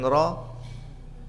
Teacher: Karena pas kita mengatakan ra tidak begitu banyak, tidak menempel, hanya bergetar ujung lidahnya